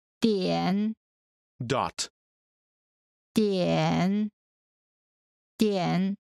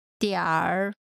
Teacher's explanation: in North China, people tend to put an ER sound after the final syllable of many words.